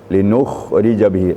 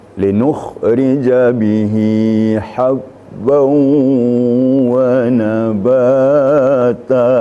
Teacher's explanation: Linukh harus kedengaran embel-embelnya, getarannya pada tenggorokan kita. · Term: huruf kha sukun